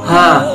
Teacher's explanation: Makhrajul huruf H terletak pada tenggorokan yang paling dalam. Sedangkan sifatul huruf H terdiri dari 5 sifat.